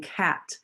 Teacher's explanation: a sound like the c as in cat that's in the back of the throat